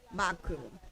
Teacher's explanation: La segunda sílaba es abierta, por lo tanto se acentúa en la pronunciación la primera.